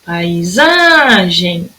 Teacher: A sílaba que mais durou tempo aí, ó, foi o za, de paisagem. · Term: sílaba tônica